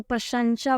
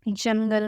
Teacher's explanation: अनुस्वार में क्या था कि उनके उच्चारण में हवा नाक से निकलती है और अनुनासिक में हवा जो है नाक व मुंह दोनों से निकलती है, ठीक है।